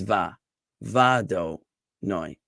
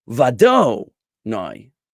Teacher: That do is going to be de-emphasized.